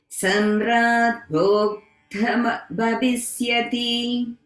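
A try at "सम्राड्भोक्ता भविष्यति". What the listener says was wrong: Okay, so in Bhokta, we have a dirgha in the ta. Bhokta and then Bhavishyati. Samrat Bhokta Bhavishyati.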